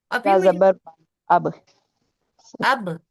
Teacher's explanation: बा दोनों होठों को मिलाने से अदा होता है · با دونوں ہونٹوں کو ملانے سے ادا ہوتا ہے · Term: قلقلہ